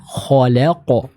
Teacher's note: huruf kha huruf tebal, huruf lam huruf tipis, dan huruf qaf huruf tebal. Nah, huruf lam ini ada di antara dua huruf tebal. · Maka kita harus berhati-hati ketika membaca huruf lam, jangan sampai huruf lamnya ikutan tebal ya. Jadi kita harus tetap menjaga huruf lam yang dibaca dengan tipis. Misal khalaqo bukan khalaqo.